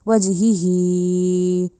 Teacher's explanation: अब इसको हमने वज ही क्यों नहीं कहा, क्योंकि एक हा के नीचे तो सिर्फ जेर है, उसको हमने कम लंबा किया, वज ही। अब जो दूसरी हा है उसके नीचे खड़ी जेर है, उसको हमने ज़्यादा लंबा किया, दूसरा मत की वजह से भी ज़्यादा लंबा किया, वज ही, ठीक है।